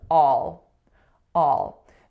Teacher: So the vowel there is a low back ah sound. And if we were looking at the word all in isolation, then I would tell you that it's going into a dark L.